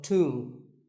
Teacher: the B is silent and the O is pronounced with an ooh sound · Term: oo sound